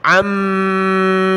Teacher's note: عین کو آگے میم کے ساتھ ملائیں گے، ناک میں آواز پیدا کریں گے، پھر میم کے اوپر مد ہے تو اس کو ہم نے کھینچنا ہے.